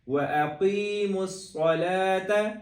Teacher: قاف موٹا کریں گے، صاد کو بھی موٹا کریں گے